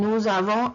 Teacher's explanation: in nous avons, I do not pronounce the S in nous, in avons.